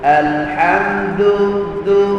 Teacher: hujung lidah membetuli akar gigi kita ya tersentuh sedikit di situ menyebabkan sebutan Dal kita jadi lembut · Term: Dal Arab